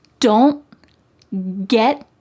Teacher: My tongue is at the top of my mouth, like it's going to make that T shape, but I just don't let the air come out. Don't get, my tongue is stopped at the top of my mouth. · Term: stopped T's